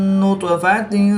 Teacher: با بھی حروف قلقلہ میں سے ہے، یہ ساکن ہے تو اس پر قلقلہ صغریٰ کریں گے. طا بھی حروف قلقلہ میں سے ہے اور یہ ساکن ہے تو یہاں پر بھی ہم قلقلہ صغریٰ کر کے پڑھیں گے.